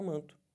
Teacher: o n não é falado como é falado na palavra navio na palavra noiva